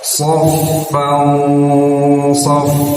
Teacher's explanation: Ketika ditahan dan disamakan itu siap-siap lidah di posisi huruf shad, karena shad ini hurufnya tebal, lidahnya diangkat ke langit-langit, maka ketika digunakan itu akan terdengar tebal. Istilahnya tabkhimul gunnah ya, ketika gunahnya terdengar tebal.